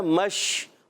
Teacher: آپ محسوس کر رہے ہیں منہ میں آواز پھیلتی ہے، اس کو کہتے ہیں تفشی